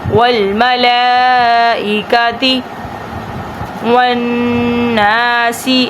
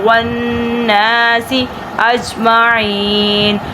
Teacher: تشدید ہے نون کے اوپر، تو اس لیے ناک میں سے آواز نکالیں گے، تھوڑا رکیں گے اور ناک میں سے آواز نکالیں گے۔ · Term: گننا